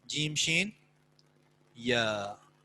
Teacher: زبان کا درمیانی حصہ یا وسط لسان جب اوپر تالو سے لگے تو جیم، شین، یا یہ حروف ادا ہوتے ہیں. جیم، شین، یا. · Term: وسط اللسان